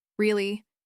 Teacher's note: Say it with a flat voice and narrowed eyes.